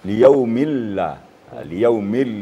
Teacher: Nun di sana atau tanwin di sana hilang dijadikan tasdik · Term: idgam bilun